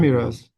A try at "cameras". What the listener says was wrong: Try the best to remove the E sound.